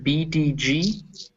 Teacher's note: They don't have that puff of air.